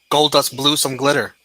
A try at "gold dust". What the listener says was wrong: It was gold dust. You have to put the pause. You have to put the pause in between.